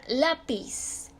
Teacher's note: Por ejemplo, la palabra lápiz se acentúa porque su sílaba tónica está en la penúltima sílaba